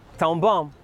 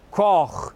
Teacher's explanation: O que acontece é que no português padrão as vogais são altas, como por exemplo o A, enquanto que no michelense, brutos como a gente é, as vogais vêm cá de trás, quase daquele sítio onde a gente enfia o dedo quando bebe muito e quer forçar o vómito, que é o véu palatino.